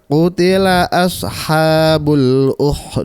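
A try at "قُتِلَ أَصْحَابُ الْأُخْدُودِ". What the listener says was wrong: Kha-nya diperjelas.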